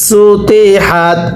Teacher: সিনটা একেবারে চিকন করে পড়তে হবে